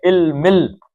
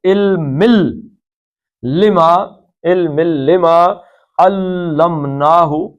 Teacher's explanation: علمن نہیں پڑھنا کیونکہ آگے لام آ گیا ہے، نون ساکن کے بعد لام آئے تو نون پڑھتے ہیں جی، لام پڑھتے ہیں، تو علمل، لما، علمل لما علمناہ، یہ کیا ہے؟